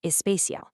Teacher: A native speaker will naturally fix a word like special by popping a vowel on the front